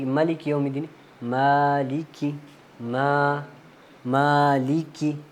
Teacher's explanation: یہ بھی بالکل ہی آسان ہے, یہ والی آیت بھی مالک کی, اس میں ہم نے میم کو مالک یوم الدین مطلب پڑھتے ہیں لوگ, وہ قرات بھی صحیح ہے لیکن بہرحال ہم نے اس طرح پڑھنا مالک یوم, ماں کے اوپر اس کے اوپر کیونکہ کھڑی زبر ہے, کھڑی زبر کو ہم نے 2 یا 3 الف کی مقدار لمبا کرنا